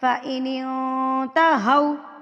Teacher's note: واؤ سے پہلے اگر زبر آ جائے تو یہ واؤلین ہوتا ہے، اس کو لمبا کر کے نہیں پڑھنا ہوتا